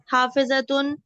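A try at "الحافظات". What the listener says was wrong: अल हाफिजातु, अल हाफिजातु, हाँ, अल हाफिजातु है, ये तुन नहीं होगा ना, आगे अल आ गया ना, तू अल हाफिजातु।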